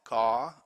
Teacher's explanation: Remember the RP R sound at the end of a word or syllable is not pronounced.